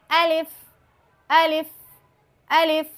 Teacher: جوف دہن کہتے ہیں منہ کے خالی حصے کو، وہاں سے الف ادا ہوتا ہے